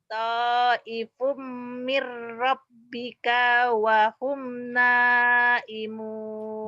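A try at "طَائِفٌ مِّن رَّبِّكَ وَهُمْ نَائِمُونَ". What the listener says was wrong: Bagus tapi kayaknya pendek di sini ya nih. Fatafa 'alaiha ta'ifum mir rabbika wa hum naimun.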